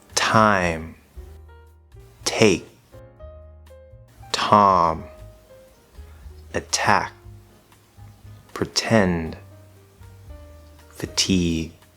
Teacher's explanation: we hear that air but what about the different types so we do have like the other stop sounds a strong or aspirated version and this we really want to hear that air nice and crisp